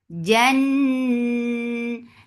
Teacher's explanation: Jim is jahar letter. There is no flow of sound or breath here. · Jan and gunna, so keep this sound in your nose for a longer time. Na 2 counts long.